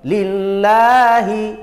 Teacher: Lillahi, lamul jalalah, lamnya lafaz Allah dibaca tarkik lagi. Tarkik artinya tipis, dibaca la, bukan lo ya. La panjang mat.